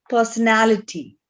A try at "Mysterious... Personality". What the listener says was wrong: Very good job.